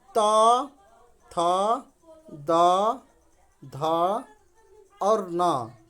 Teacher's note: शब्दों का उच्चारण दांतों की सहायता से होता है, ठीक है, वो दंत्य कहलाते हैं।